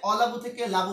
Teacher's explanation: আদি স্বরলোপ। মানে শুরুতে স্বরধ্বনি বাদ পড়ে গিয়েছে